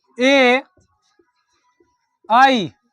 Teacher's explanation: ए आई इसका उच्चारण स्थान कंठ तालु है, यानी कि ए और आई का उच्चारण स्थान किससे होता है? कंठ और तालु से होता है।